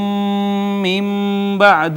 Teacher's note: نون ساکن کے بعد با حرف اقلاب، ما قبل نون ساکن کو چھوٹی میم سے بدل ڈالا، اقلاب ہو گیا